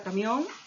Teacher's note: la mayor fuerza de voz está en la última sílaba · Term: palabras agudas